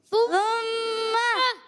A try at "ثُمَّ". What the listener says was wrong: میم کی زبر کو کھینچنا نہیں، ثم ایسے نہیں، ثم رک جائیں گے، جھٹکا بھی نہیں، ثم جھٹکا بھی نہیں دیں گے، غلط ہو جائے گا.